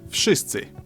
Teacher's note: It almost sounds like he says the W like an F.